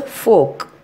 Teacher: When the letter R is followed by a consonant, we won't pronounce the R. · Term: silent letter R